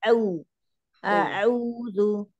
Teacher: huruf ainnya hati-hati jangan sampai naik hidung